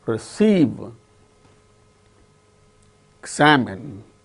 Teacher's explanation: in the case of all these 6 words, the second syllable is stressed and the remaining syllables are not stressed.